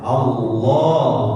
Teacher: Dibiasakan memanjangkan lafaz Allah di dalam huruf lamnya. Allah. 2 harokat.